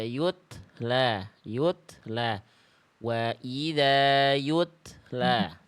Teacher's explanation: Yutla jangan ada e-nya. Cukup percikan nafas saja.